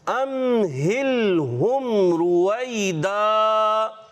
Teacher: را کو پر رکھیں گے کیونکہ را پر پیش ہے